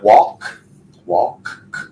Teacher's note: Final sound on walk is that K sound, no vibration, therefore column 1, walked.